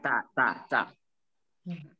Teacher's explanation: Yang huruf hames itu kalau kita sebutkan, kalau kita rasakan di depan ini tangan, ta, dia kayak ada angin. Kayak ada angin, ta, ta, ta.